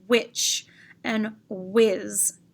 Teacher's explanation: you can feel a breath on your hand which and whiz you can feel the breath from the h